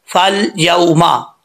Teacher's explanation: فا کو جب لام سے ملائیں گے الف ختم ہو جائے گا